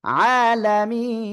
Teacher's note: এক আলিফ মদের পরের অক্ষরে ওয়াকফের কারণে সাকিন হচ্ছে, তিন আলিফ টান হবে